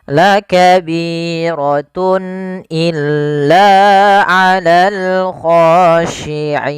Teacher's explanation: Kemudian pada lafal tun illa, di sini ada izhar halqi, yaitu suara tanwinnya harus dibaca dengan jelas karena ketemu dengan huruf hamzah.